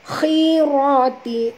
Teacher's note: huruf kha sini walaupun baris bawah tetap tebal. Kalau tuan-tuan membaca khirati tak betul, jadi ha, ini kha.